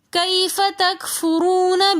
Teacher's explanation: واو ساکن اس سے پہلے پیش ہونے کی وجہ سے ہم اس واو کو کھینچ کر پڑھیں گے۔ تکفرو رو کے اوپر پیش ہے تو اس لیے ہم اس رو کو موٹا کر کے پڑھیں گے۔ · کیف میں یعلین ہونے کی وجہ سے ہم اس یا کو نہیں کھینچیں گے، کیونکہ یا ساکن اس سے پہلے زبر ہونے کی وجہ سے یعلین ہے، تو ہم اس کو جلدی سے پڑھیں گے۔